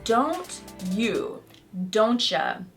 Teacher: So pay attention to these examples and practice saying them after me. First, this happens when a T and Y sound combine together to become ch. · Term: assimilation